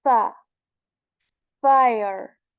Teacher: you know tip of our upper teeth or you can say the edges of our upper teeth they touch our inside of the lower lips right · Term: fa letter